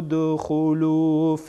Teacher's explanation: دال هم در اینجا قلقله میشه یعنی تکان میخوره